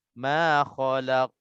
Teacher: Di sini kalau kita berhenti, qaf ini akan mati. Kita akan sukunkan qaf ini dan qaf ini akan jadi qalqalah.